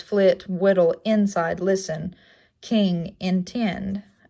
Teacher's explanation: Its description is high, front, unrounded, and lax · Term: small capital I